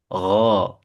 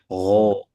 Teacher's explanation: Cara mengucapkannya dengan menyentuhkan akar lidah ke bagian tenggorokan paling luar. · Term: huruf g